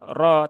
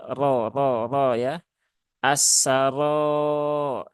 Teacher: ro-nya dibaca dengan tafkhim, ya, atau tebal, yaitu dengan cara mengangkat pangkal lidah, ya. Jadi pangkal lidahnya naikkan ke atas, ya.